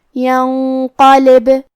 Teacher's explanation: کلمت ینقلب میں آخری میں با پہ جزم ہے لہذا ہمیں با کو ہلاتے ہوئے یہ کلمہ کو پڑھنا ہے